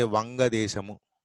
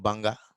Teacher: Bengalis, they don't have wa. Wa sound is not there for them. So whenever va comes, they substitute with ba.